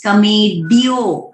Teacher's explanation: ड्यो डो नहीं है, वो य जो है उसका आवाज ठीक से आना चाहिए